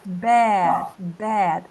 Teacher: ele tá entre o e do nosso pé e o a